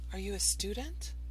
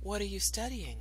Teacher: intonation are you a student goes up at the end however for information questions it has a falling intonation